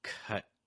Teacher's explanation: I'm not releasing the breath on the last P until I get to the S on star. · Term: held sounds